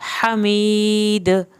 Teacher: हमीद, हा को हल्क से पढ़ के यहाँ भी या साकिन को खींच के और आखिर में दा पे कलकला करना है